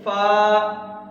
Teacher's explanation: فا کا مخرج اوپر والے دانتوں کے کنارے جو ہیں وہ ہمارے نیچے والے ہونٹ کے اندر والے حصے میں لگیں گے، تری والے حصے میں، فا۔